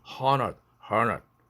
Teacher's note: 모음 ND 모음이 돼서 드가 날아가서 hundred, hundred 이런 식으로 발음이 바뀝니다